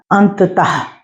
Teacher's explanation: अंततः में आखिर वाले में तह में ह की ध्वनि सुनाई दे रही है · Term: विसर्ग